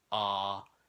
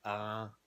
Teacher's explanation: that's a regular vowel like ah, and if it's medium, it'll be a nasal vowel like ah. If it's low, then it's it's just a nasal consonant.